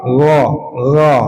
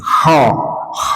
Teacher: Tapi kalau gho itu enggak ada udara yang keluar tapi suaranya mengalir. K mengalir dan sekaligus ada udaranya.